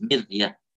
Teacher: ra-nya sukun tapi sebelumnya kasrah maka di sini tipis